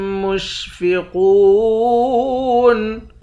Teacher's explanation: قاف کو موٹا پڑھیں گے، قاف کو واو کے ساتھ ملا کر واو کو ایک الف کے مقدار کھینچ کر پڑھیں گے، آخر میں نون ساکن ہے۔